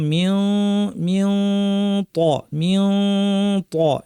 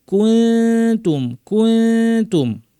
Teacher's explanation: দেখেন জিহ্বার শীর্ষ থেকে একটু ভিতরের অংশ, এটাকে তরফুল লিসান বলা হয়, এটা উপর পাটে দাঁতের গোড়ায় গিয়ে লেগেছে, কিন্তু জিহ্বার শেপটা ভিন্ন। ত বলার সময় জিহ্বার পেছনটা উঠে যাচ্ছে, শব্দটা এখানে চাপা পড়ে ভারী আওয়াজ হচ্ছে। তা বলার সময় জিহ্বাটা নেমে থাকবে, ফলে আওয়াজটা ভারী হবে না, পাতলা হবে।